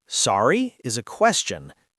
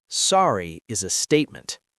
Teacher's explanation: Sorry with a rising tone means, can you repeat that? But sorry with a falling tone is an apology.